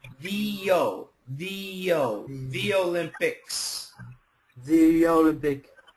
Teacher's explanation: when we have two vowels together EO in this case e it gives you that Y sound